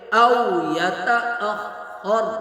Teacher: خا اور را دونوں کو پر کر کے پڑھیں گے